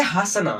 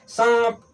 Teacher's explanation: अनुनासिक का उच्चारण स्थान नासिका और मुख दोनों से होता है। जब इसका उच्चारण स्थान करेंगे तो नाक और मुंह दोनों का प्रयोग होगा।